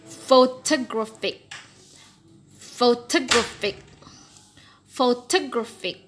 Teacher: The primary stress is on gra. Okay, gra. The secondary stress is, with this mark, is on pho.